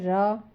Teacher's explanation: जीभ तालू से लुढ़क कर स्पर्श करता है। तो ये आपका आ जाता है र। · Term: लुंठित व्यंजन